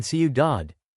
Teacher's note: in ciudad, city, the stress is on the last syllable